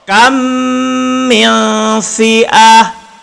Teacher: Ingat mem mati bertemu dengan mem, dibaca dengung dua harkat. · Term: idgham mislain